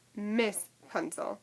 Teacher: And so this can kind of help to explain why she opts for the high vowel I instead of that schwa sound